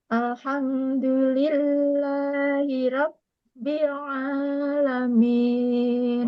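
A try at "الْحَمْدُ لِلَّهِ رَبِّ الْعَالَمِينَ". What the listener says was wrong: Alham ditarik lagi karena ada tawasudnya. Jangan bururu.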